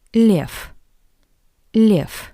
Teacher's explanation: the voice consonant V at the end of this word sounds like the paired voiceless consonant f